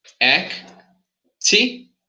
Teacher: In this word, we have four syllables, and the stress is in the first T, in the first TI.